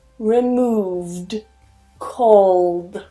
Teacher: So when we have these sounds with vibration, we call them voiced sounds. When we have a voiced sound at the end and then we add the ed, we continue that vibration and we add a d sound at the end.